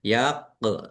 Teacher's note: menjadi mat arid lis sukun dibaca panjang boleh 6, 4 atau 2 harokat